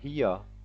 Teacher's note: repare que o britânico não fala o R no final, o americano fala